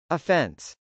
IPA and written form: əfˈɛns (offense)